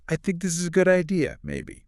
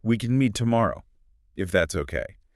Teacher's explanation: The voice just drops, the energy disappears, and then they add a little tag that undermines the whole statement. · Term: end their sentences weakly